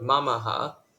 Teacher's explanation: each has exactly 1 mora, so the stress falls on the first syllable